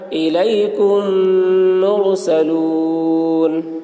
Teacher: میم ساکن کے بعد میم آ رہا ہے اس لیے میم کو میم کے ساتھ ملا کر غنہ کے ساتھ پڑھیں گے، اس کو ادغام شفوی کہتے ہیں۔